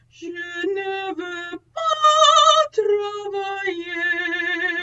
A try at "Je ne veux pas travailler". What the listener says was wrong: So you're still stopping. You're still going. Je ne veux pas.